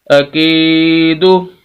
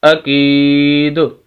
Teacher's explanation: آخری حرف جو دال ہے اس کے اوپر جو پیش ہے اس کو ہم ختم کر دیں گے اور دال کو بھی ساکن کر دیں گے، اور کیونکہ یہ وقف کا یہی طریقہ ہے کہ جس حرف پر وقف کرنا اس کو ساکن کر دیں، اور ساکن جب کریں گے تو اس کی زبر زیر پیش جو اس کے اوپر نیچے حرکت ہے وہ ختم ہو جائے گی، اور وہ آخری حرف ساکن ہو جائے گا تو وقف ہوگا اکید۔